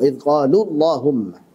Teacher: lam itu ada kondisi di mana dia tebal. Kapan itu? Pada lafaz Allah.